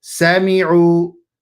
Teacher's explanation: So don't say sami'u. A lot of times people make this mistake. They extend that sin. Do not extend that sin.